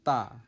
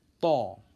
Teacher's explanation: Ta itu di bibir. Bibirnya biasa saja, ta. Lidah di ujung bibir, di ujung gigi, maksudnya begitu. Ta. Sedangkan to itu bentuk mulut kita agak monyong.